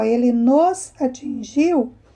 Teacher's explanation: o nos, ele não é forte, não é? Ele não tem o som forte, mas ele tem uma sílaba só. Ele é formado por uma sílaba só. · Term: monossílabo átonos